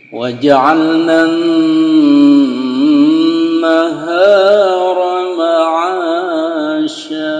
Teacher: Ra-nya itu bisa ditipiskan ya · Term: Ra-nya tipis